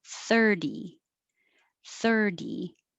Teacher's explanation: the t sounds like a d and the stress is on the first syllable